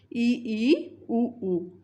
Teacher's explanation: इनके उच्चारण में जीभ ऊपर उठती है · जिन स्वरों के उच्चारण में जिह्वा अधिक ऊंचाई पर होती है वे संवृत स्वर कहलाते हैं